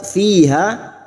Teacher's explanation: di kasr bertemu Ya Sukun dua harakat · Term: Mad thii